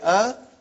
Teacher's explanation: alif has no speech sound when you say ah it is the sound of hamza